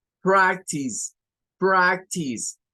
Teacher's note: nos dice que tiene dos sílabas. La primera es prac, con el sonido AE para esta. · la E no suena, pero escuchamos una S al final y es tis.